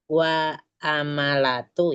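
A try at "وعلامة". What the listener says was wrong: Bukan wa amal ya, wa ala. Lam dulu baru mim Umi. Wa alamatu, bukan wa amalatu. Alamat.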